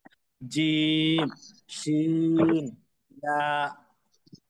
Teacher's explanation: ছয় নম্বর মাখরাজ জিহ্বার মধ্যখান তার বরাবর উপরের তালুর সঙ্গে লাগাইয়া উচ্চারিত হয়